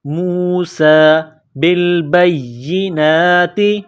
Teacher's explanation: سین میں سیٹی کی آواز پیدا کریں گے، سین کے اوپر کڑا زبر ہے، 1 الف کے لمٹ میں کھینچیں گے، موسیٰ بالبینات۔